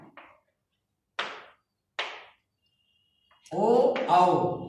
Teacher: ओ औ कंठोष्ठ ये ओठ और कंठ के माध्यम से बोले जाते हैं